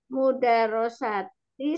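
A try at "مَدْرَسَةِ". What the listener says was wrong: Mimnya fathah.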